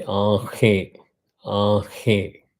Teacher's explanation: Whereas if you have a chandra bindu, that means you have a chandra and a bindu in the center, it is called anunasika. Anunasika means the swaram has to come from the nose, nasal sound. If you know Hindi, you say aanhe, aanhe.